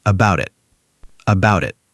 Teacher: The T turns into a fast D sound. We call this a flap T.